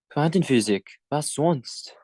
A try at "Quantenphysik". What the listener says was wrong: Yeah, again here with the Y, that's pronounced like an U, yeah? So don't say physic, yeah? Physik. Die Quantenphysik.